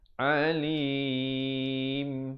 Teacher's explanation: ditutupkan mulut rapat, menyempurnakan bunyi mimnya dengan kadar 2, 4 atau 6 harakat